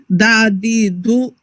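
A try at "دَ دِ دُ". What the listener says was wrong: Little faster. And dad, however heavy you can do, keep it heavier, right? No movement. Watch my lips. No movement on these first two.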